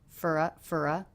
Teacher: reduced the vowel in the word for to the schwa